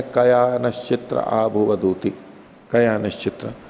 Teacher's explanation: लेकिन कया में या का आ है, ये दो मात्रा का है।